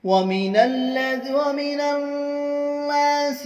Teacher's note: وَمِنَ النَّاسِ، نون سے تشدید کریں گے، الف اور لام کو نہیں پڑھیں گے، آگے والے نون سے تشدید کریں گے اور گنہ کے ساتھ پڑھیں گے اور ایک الف کھینچ کر پڑھیں گے.